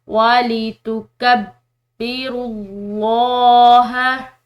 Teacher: یہاں پر بھی لفظ اللہ کی لام موٹی پڑی جائے گی کیونکہ اس کے پیچھے والے حرف یعنی کہ را کی پیش ہے